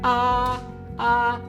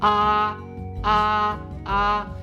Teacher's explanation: it's a high flat tone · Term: first tone